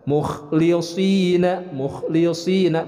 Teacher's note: untuk huruf kha pembacaannya ini harus jelas cara pengeluaran hurufnya, yaitu dari adnal halki, dari ujung tenggorokan